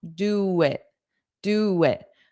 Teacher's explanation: But in this case, look at my mouth position. Do w w w My mouth is already in the position to form a w a W sound.